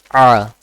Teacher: i'm pronouncing it from the middle of the throat